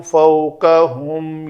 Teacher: یہ دو لفظ واو لین ہیں، قاف زبر و کو، فا زبر و فو، جیسے لکھنؤ میں نو ہے